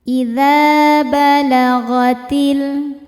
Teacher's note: Kemudian ada alif lam qamariah. Sebab alif lam menghadapi huruf qamariah yaitu ha. Cara bacanya lam dibaca izhar atau jelas.